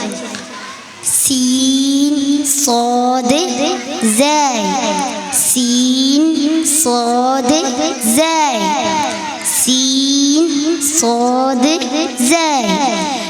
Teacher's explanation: രണ്ടു പല്ലിന്റെയും ഇടയിലൂടെ വരുന്ന അക്ഷരം